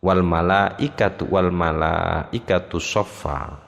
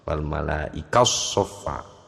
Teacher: taknya disukunkan langsung baca shad gitu